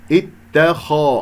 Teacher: الخاء مفخم مرتبة ثانية ننتبه إليها